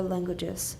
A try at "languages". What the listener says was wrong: Pretty good.